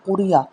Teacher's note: یہاں پہ را کو باریک پڑا جائے گا کیونکہ را کے نیچے زیر ہے